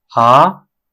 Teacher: initially starts at three and gradually rises to five